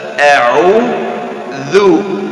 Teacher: A'udzu, jadi harus kita memastikan hamzah jelas, a'udzu, dan dzal makhrajnya dari ujung lidah bersama ujung gigi seri atas